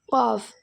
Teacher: நாவின் வேர் பகுதியில் வெளியாகிறது